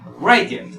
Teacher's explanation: Mayor fuerza de voz en la tercera sílaba.